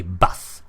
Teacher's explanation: And if you're listening to that vowel that you have instead of a U, bus. It's a Swedish A in short form.